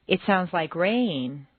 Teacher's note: Make rain very musical and put it on two notes. Rain. Da da da rain. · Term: New information